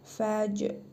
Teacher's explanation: Cim hərfinin üzərində cəzm var. Qalqalə edərək bir vurğulu tələffüz edirik.